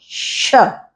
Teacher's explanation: जो मूर्धा से बोला जाता है, जीभ के पीछे का भाग है और ऊपर की तरफ मिलाकर आवाज निकाली जाती है